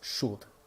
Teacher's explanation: The S and the K in Old Norse make a sh sound, so it's Skuld.